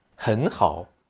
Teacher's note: when you pronounce two third tones consecutively. The first one will become a second tone.